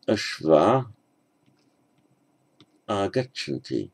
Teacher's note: where you have a long a with visarga, as here, ashvah, followed by the next word beginning with a vowel, the visarga drops out.